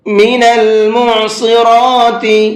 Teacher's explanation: عین کو حلق سے نکالیں گے اور صاد کو پر کر کے پڑھیں گے